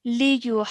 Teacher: because of the Madul Kabir, we have to stretch for at least 4 seconds